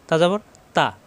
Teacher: তা জবর তা দেরি করা যাবে না। তা জবর তা এ হরফটি ত মোটা হবে। জবর আসার পরও আকার প্রকাশ পাবে না। তজবর ত হবে না। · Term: মোটা হরফ